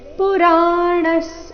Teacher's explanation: ಇಲ್ಲಿ ವಿಸರ್ಗದ ಉಚ್ಚಾರಣೆ ಸ ರೀತಿ ಬರಬೇಕು